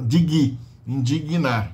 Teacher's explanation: Indigno, tem que colocar o I ali no meio. Porque a gente não tem gná. Não tem esse encontro consonantal.